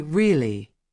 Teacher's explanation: When they say, really, with a low tone, it means they already knew. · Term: intonation